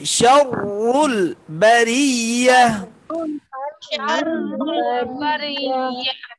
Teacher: প্রথম রটা মোটা হবে পরের রটা বারিক হবে